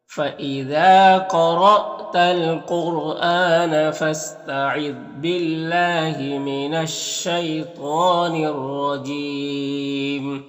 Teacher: یہاں پر الف لام حروف شمسی شین کے شروع میں تو الف لام دونوں کو نہیں پڑھیں گے · یہاں پر اللہ کے لام سے پہلے با کے نیچے زیر ہے تو اللہ کے لام کو باریک پڑھیں گے